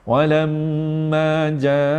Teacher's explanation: Yang pertama ni tuan-tuan lekat. Walam mim bibir atas dan bibir bawah memang melekat tuan-tuan, dah masuk hidung terus. Walamma, lam tu dah 2 rakaat, ma tu lagi 2 rakaat. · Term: dengung lekat